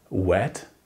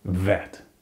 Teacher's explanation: De nincsen benne például a magyarban a dupla v, a w. Biztos láttad, hogy ez egy kicsit ajakkerekítéses hang, nem pedig v hang.